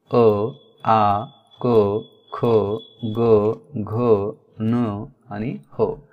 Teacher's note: या वर्णांचा उच्चार करत असताना ती कंठाला प्रभावित करतात, म्हणून या वर्णांना कंठ्य वर्ण असे म्हणतात.